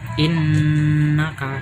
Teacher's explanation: cara membacanya itu dengan dengung, terus ditahan 3 harokat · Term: gunah